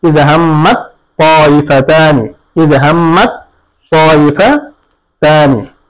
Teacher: এরপরে দেখি ইয হাম্মাত তাইফাতানি, এরকম তা এবং তা এর জায়গায় একসাথে এসেছে, তা সাকিন ত হরকত যুক্ত, তাহলে তাকে ত এর মধ্যে ইদগাম করতে হবে